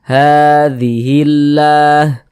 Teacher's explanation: Nah ada harakat fathah berdiri Wah berbentuk Alif kecil seperti ini sehinganya ha dibaca panjang Mad thobii panjang dua harakat